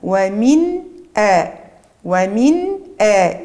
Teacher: إظهار صوت النون الساكنة، يلزم تخرج كاملة في النطق واضحة في السمع. ومن آ، ومن آ، ما تسرعش، كمل النون الساكنة في عقلك ثم امشي للهمزة، لهمزة القطع اللي جات بعدها. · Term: الإظهار